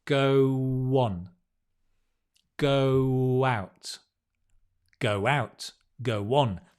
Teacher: Whenever you have a word ending in O and the next word begins with O, you put a W. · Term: linking